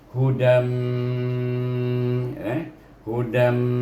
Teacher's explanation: idgham dengan gunnah, iaitu gunnah 2 harakah